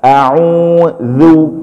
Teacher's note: keluarnya sama dengan huruf tsa ujung lidah taruh di ujung gigi seri atas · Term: dza